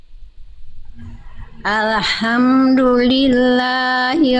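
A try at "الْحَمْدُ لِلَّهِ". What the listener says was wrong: Hati-hati, saya potong dulu sedikit. Jangan lam sukun, jangan memantul.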